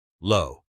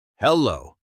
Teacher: Notice how your mouth makes an O shape at the end. Low. It's longer than the first part.